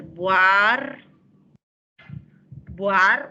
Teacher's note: La cerrada se pega a la abierta. O sea, en buhardilla debe haber diptongo. Debe ser buar, buar, una sola sílaba, de ahí di y ya.